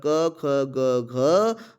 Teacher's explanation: ये सभी और ह सभी कहां से बोले जाएंगे ये सभी आपके कंठ से बोले जाएंगे